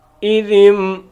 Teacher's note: یہ پورے قرآن کے اندر یہی قاعدہ ہے، جدھر بھی آپ دیکھیں گے کہ نون ساکن کے بعد با آ رہی ہے تو وہاں پر اوپر چھوٹا سا میم لکھا ہوگا، ٹھیک ہے۔ تو ہم نون کو نہیں پڑھیں گے، صرف میم کو ہی پڑھیں گے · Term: اقلاب